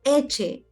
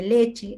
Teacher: el niño dice eche en vez de leche, está omitiendo el fon l.